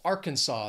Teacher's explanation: three syllables stresses on that first syllable · Three syllables, stress is on that first syllable. Arkansas. This is a common one that people have a little trouble with because, again, don't think of the spelling.